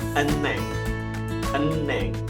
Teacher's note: namun ternyata bacanya eneng. Eneng. Hietnya tidak terbaca.